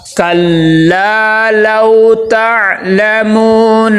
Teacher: لو لام کے آگے واو لین آ گیا ہے، لام کو واو کے ساتھ ملائیں گے، نرمی کے ساتھ ادا کریں گے